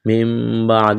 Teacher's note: نون ساکن کے بعد با ہے، یہاں پر اقلاب کریں گے، یہاں پر میم کو پڑھیں گے. یہ چھوٹی سی میم نظر آ رہی ہے، میم کو میم کے ساتھ ملانا ہے.